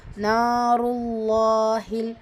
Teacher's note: அல்லாஹ்ங்குற அந்த லாமை கனமா ஹெவியா ஓதணும்